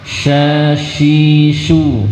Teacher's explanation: huruf sin punya sifat tafasyi, dia sebarkan udara dengan deras.